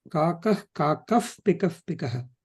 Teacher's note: Visarga when followed by pa, make it as F sound.